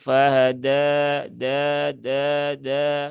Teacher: Ketika mengucapkan huruf dal itu tidak disertai dengan aliran nafas. Sehingga karena dia sifatnya bukan hamas ya, tetapi dia sifatnya jahir.